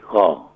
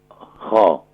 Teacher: خا کو گلے کے ٹاپ سے ادا کریں گے